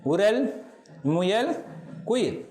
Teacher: இதழ் குவித்து பழைய இலக்கணகாரர் சொல்வது போல சரியாக உச்சரிக்கப்படுகிறது. முதலாவது மொழி முதலில் வரும் உகரம் இதழ் குவித்து, அதாவது முற்றியல் உகரமாகவே உச்சரிக்கப்படுகிறது.